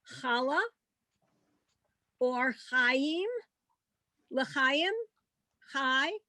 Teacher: it has the h sound back in the throat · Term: ch sound